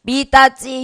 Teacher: 받침 디귿이나 티읕이 모음 이와 만났을 때 지읒이나 치읒이 돼요.